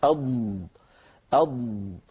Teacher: طبعا حرف الضاد كنا قد تكلمنا عن مخرجه بارك الله فيكم، وتكلمنا عن صفاته، وبينا بأنه حرف مجهور لأنه ليس من حروف خص ضغط انقض، وهو أيضا حرف رخو لأن الصوت يجري عند النطق به